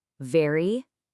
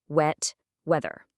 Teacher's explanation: Feel the vampire teeth on very, and then the round lips for wet and weather.